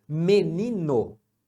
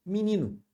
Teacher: u em muitas palavras em português então isso é uma redução a gente reduz o e para i e o o para u